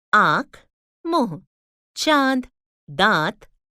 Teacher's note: इनको नाक और मुंह से बोला जाता है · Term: अनुनासिक या चंद्र बिंदु